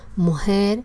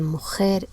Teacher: la relajación del fonema velar, articulación mu(h)er en lugar de mujer